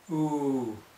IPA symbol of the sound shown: u